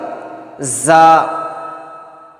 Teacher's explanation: زا کی آواز جما کر نکلتی ہے سیٹی کے ساتھ